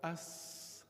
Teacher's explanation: suspended between the upper and lower incisors, more over the lower incisors, the tip of the tongue is suspended there. And there is where we pronounce a sin.